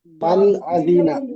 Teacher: নুন সাকিনের পরে হামজা এসেছে, হরফে হালকির 6টি হরফের মধ্যে থেকে একটি হামজা এসেছে, তাই নুন সাকিনকে বিনা গুন্নায় জাহির করে তাড়াতাড়ি করতে হয়।